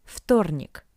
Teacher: Tuesday – вторник. The letter V being in front of the voiceless consonant T sounds like its paired voiceless consonant F.